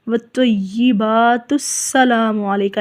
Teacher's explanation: اگر ہم تا کو ساکن نہیں کریں گے، یہاں پر وقف نہیں کریں گے تو ہم اس کو پڑھیں گے تسلام، ٹھیک ہے، حمزہ کو حذف کر دیا جائے گا